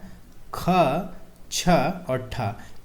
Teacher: ख, छ, ठ ये जो है हमारा महाप्राण वाला वर्ग है